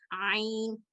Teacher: आइन जो है ये हलक के दरमियानी हिस्से से अदा होता है और इसकी आवाज फ्लेक्सिबल होती है और बाकी हरूफ से थोड़ी सी कदरें मुख्तलिफ होती है, आइन।